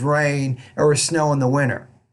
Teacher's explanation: So at the end of each thought group, except the last thought group in the sentence, you want to have a rising tone. When you get to the end of the sentence, your tone needs to fall.